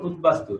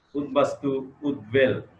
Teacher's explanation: উৎ উপসর্গ, এখানে যেমন উদ্বাস্তু, এখানে উৎ উপসর্গ আছে, উৎ, এটার সাথে বফলা যুক্ত হলে কি হয়, বয়ের উচ্চারণ স্পষ্ট থাকে।